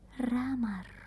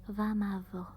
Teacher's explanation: some people aren't able to roll it, and they actually say a V instead of R.